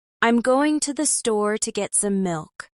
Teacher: The stressed words are store and milk because they carry the most meaning. The other words connect them like a soft bridge.